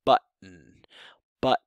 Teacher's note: an American English something like a but but which is actually the stop there is just a glottal stop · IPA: [ʔ]